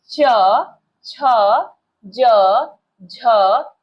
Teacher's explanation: च वर्ग के सारे वर्ण जैसे कि च, छ, ज, झ, इ और साथ ही य और तालव्य श, इनका उच्चारण स्थल है तालु। तालु से इनका उच्चारण किया जाता है।